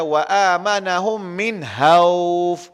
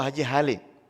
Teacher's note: Orang kita kadang-kadang dia tak bunyi kha. Dia tak bunyi KH. Dia bunyi ha.